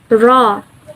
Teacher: voiced alveolar tap and flap.